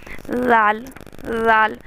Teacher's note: तो जाल की आवाज़ को निकालने के लिए जाल जाल दोनों दांतों के बीच में ज़बान आएगी। जी, दोनों दांतों के बीच में ज़बान आएगी तो हमारा जाल बनेगा